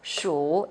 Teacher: It's a third tone, down and up.